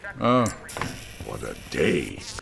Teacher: when we have a T between two vowels, it usually morphs into a soft D, duh duh sound.